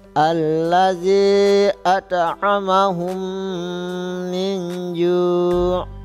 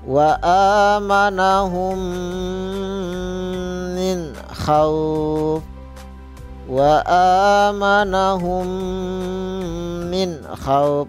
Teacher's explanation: Yaitu jika ada mim mati atau mim sukun bertemu dengan huruf mim, ya, mim mati atau mim sukun bertemu sesama mimnya, ya, maka cara membacanya memasukkan huruf mim mati ke dalam huruf mim yang disertai dengan gunnah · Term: idgham mimi